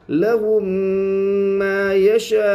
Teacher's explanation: واو ساکن سے پہلے پیش اس لیے واو مدہ ہوگا، واو مدہ کو ایک الف کے برابر کھینچ کر پڑھے